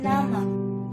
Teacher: Ujung lidah sebagai artikulator menyentuh kaki gigi atas sebagai titik artikulasi. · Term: Bunyi apikoalveolar